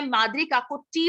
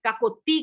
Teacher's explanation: टी बोलते वक्त दांत को नहीं टच करती, मेरी जीभ दांत से बस पीछे रह जाती है।